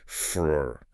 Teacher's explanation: The phrase for a doesn't get fully articulated. The jaw goes slack, and it just becomes the schwa-heavy frr.